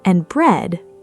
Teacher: finally falling, signaling that the list has reached its end